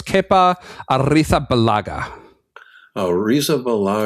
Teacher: You got to trill the R and lisp your Z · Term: Castilian lisp